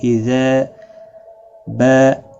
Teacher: اذا اور با الف مدہ ہے، دونوں کو ایک ایک الف کی مقدار کے برابر کھینچ کر پڑھیں گے